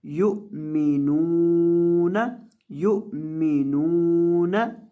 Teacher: और नून को लंबा करेंगे, इसके बाद वाव है